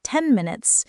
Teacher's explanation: When spoken quickly, the N sound can sometimes become more like an M sound because of the M in minutes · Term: Assimilation